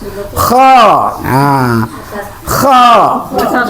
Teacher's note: Kho dari tenggorokan bagian atas.